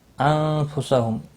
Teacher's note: انفسہم، نون ساکن کے بعد فا آیا ہے، اخفا حقیقی ہوگا